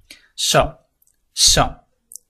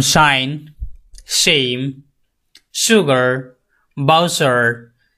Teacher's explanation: The tongue touches the back of the এলভিওলার রিচ। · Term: পোস্ট এলভিওলার সাউন্ড